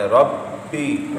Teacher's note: با حروف قلقلہ ہے، مشدد ہے، جماؤ سے پڑھیں۔ ربی، آگے با پر جماؤ بھی کرنا ہے اور یا مدہ بھی کرنا ہے۔